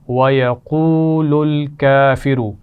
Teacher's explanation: واو مدہ ہے اور کافروں کے کاف پر کھڑا زبر ہے، کھینچ کر پڑھیں گے